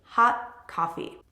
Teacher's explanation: when you have two consonants back to back, like the T in hot and the K sound, or C, the letter C in coffee, you will completely drop that T.